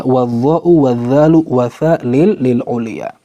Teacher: ujung lidah lebih mendekati ke ujung gigi seri atas, maka itu makhraj huruf dho, huruf dha, dan huruf tha